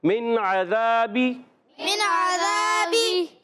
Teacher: من عذابی، نون ساکن کے قاعدوں میں سے ایک قاعدہ ہے، تو یہاں قاعدہ نون ساکن عین آ گیا، حرف ہلکی، حرف ہلکی آ جائے، نون ساکن تنوین کے حرف ہلکی میں سے کوئی حرف آ جائے، اظہار ہلکی ہوگا، تو یہاں غنہ نہیں کریں گے، عین کو، عین پر زبر ہے، حلق کے درمیان والے حصے سے بھی، اور بغیر کھینچے ادا کریں گے، اور ذال الزبر ذا، مدہ ایک الف کھینچنا بھی ہے، اور باقی نیچے زیر حرکت ہے۔